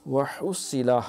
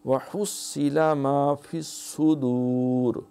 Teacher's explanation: ہا اہتمام سے گلے سے رگڑتی ہوئی